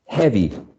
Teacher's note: heavy is a two-syllable adjective stressed on the first syllable